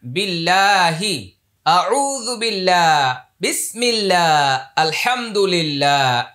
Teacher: আল্লাহ শব্দের পূর্বে জের আসছে এটা কি হবে পাতলা হবে